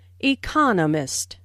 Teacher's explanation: There are 4 syllables in economist, with the stress on the second syllable